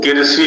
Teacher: री का इर जैसा उच्चारण कर दिया है वहां पर